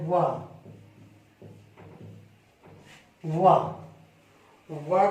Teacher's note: वा का उच्चारण होता है दांत और ओष्ठ से